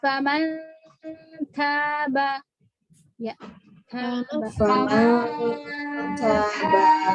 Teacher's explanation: Ta itu ada hamas ya, jangan lupa dia berhamas.